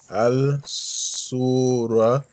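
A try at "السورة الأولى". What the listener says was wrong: There is a shadda here. As-Suratul Ula. As. Join Ali with Swad. As. As-Su. Ra.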